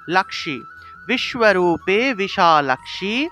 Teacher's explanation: বিশালাক্ষী, এখানে ক্ষীয় আছে, এই ক্ষীয়ের উচ্চারণটা মূলত ক যুগ মূর্ধন্য ষ এইভাবে উচ্চারণ হয়